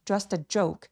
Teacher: just의 T와 어가 만나서 just라고 연결해 주시고요.